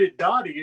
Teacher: The two R's in that word, the R sounds like a D.